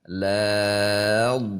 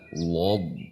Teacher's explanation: la-nya jangan sampai ikut tebal. Lob, ya ikut tebal, tapi walau, karena huruf dhad ini memiliki sifat juga istitalah sehingga tidak bisa langsung dihentak.